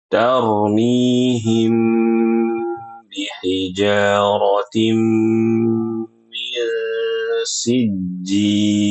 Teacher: mim sukun bertemu ba ada idgham bighunah pada huruf mim di situ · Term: idgham bi gunnah